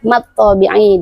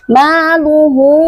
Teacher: Setelahnya ada alif ma, maka hukum bacaannya adalah mad thobi'i. Dibacanya panjang dua harakat.